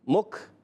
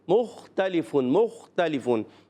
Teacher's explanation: مختلفون، میم خا پیش مخ، مخ، بعض بچے پڑھتے ہیں مکھ، مکھ بھی کر دیتے ہیں، مخ ایسے پڑھتے ہیں، اتنا نہیں، مختلفون، مختلفون، تو خا کو حرف مستعلیہ میں سے موٹا پڑھیں گے۔